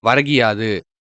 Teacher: முதல் சொல்லின் இறுதியில் உள்ள கு என்னும் எழுத்து கி என்று ஒலிக்கிறது. அதுவும் முழுமையாக ஒரு மாத்திரை அளவில் ஒலிக்காமல், அரை மாத்திரை அளவாக குறைந்து ஒலிக்கிறது. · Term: குற்றிய லிகரம்